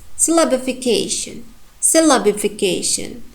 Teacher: I pronounced 2 syllables stronger than others, and the strongest one is cation, k, and also the next strong one, la.